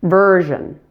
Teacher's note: Zh, zh. Then the vowel in the final syllable, zhen, is reduced to a very quick schwa.